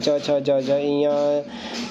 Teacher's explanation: तालू और जीभ का प्रयोग किया जाता है और इसे तालू या तालव्य बोलते हैं